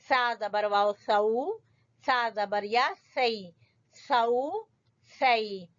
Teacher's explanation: سا کا مخرج زبان کی نوک اور سامنے والے 2 دانتوں کے سرے